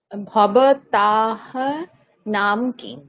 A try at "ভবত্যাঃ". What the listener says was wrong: ঠিক, এখানে তয়ে জফলা আছে তাহলে উচ্চারণটা হবে হ্যাঁ, ভবত্যাহ, বিসর্গও আছে সেই জন্য বলতে হবে ভবত্যাহ।